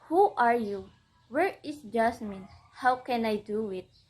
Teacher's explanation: Sentence beginning with the WH and H, questions like what, where, who, and how end in falling pitch